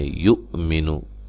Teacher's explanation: حمزہ کو جھٹکے سے ادا کرنا ہے، کسی کو لمبا نہیں کرنا۔